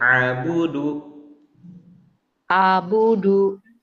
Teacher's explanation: ain kan dari tengah tenggorokan